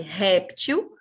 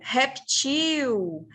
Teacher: A língua portuguesa aceita que a gente fale réptil como uma paroxítona ou reptil. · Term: dupla tonicidade